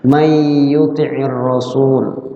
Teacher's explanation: Nunnya dimasukkan ke ya, itu idgham artinya. Kemudian dia disertai dengan gunnah, namanya idgham bi gunnah.